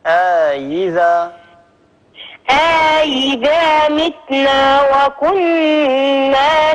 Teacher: أدخلي ألف بين الهمزتين